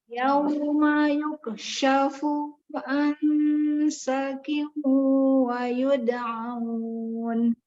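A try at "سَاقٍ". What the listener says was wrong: Bagus, cuman sakin, yakin sa-nya nggak panjang? Tadi dibaca 1.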